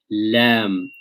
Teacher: So there's neither a complete flow, neither is there a complete stoppage. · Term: tawassut